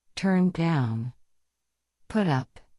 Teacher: the particle, which is down and up, is much more highlighted or stressed